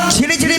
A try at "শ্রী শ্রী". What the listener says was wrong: আরে মাসি ওনার নাম ছিরি ছিরি না, বলো শ্রী শ্রী।